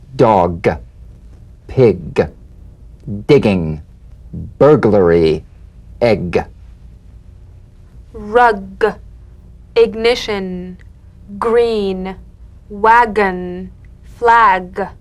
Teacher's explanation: tap and a voiced pulsation of the back of the tongue